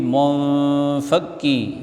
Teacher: nun mati jumpa dengan fa, ikhfa, ini dibaca samar-samar, dengung.